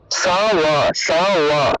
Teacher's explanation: বটাকে আমরা ঠোঁট না লাগিয়ে উচ্চারণ করবো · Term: অন্তস্থ ব